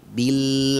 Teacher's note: kita harus buat suaranya mengalir dan tahan lidahnya di makhraj Lam